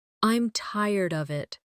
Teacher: they might say I'm tired of it with of sounding almost like uh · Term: weak forms